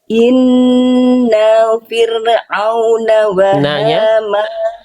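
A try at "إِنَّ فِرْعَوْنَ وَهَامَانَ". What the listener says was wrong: Nanya satu harokat aja Bunda. Inna fi. Kalau Bunda tadi inna fi. Nah, nah yang ininya kepanjangan ya.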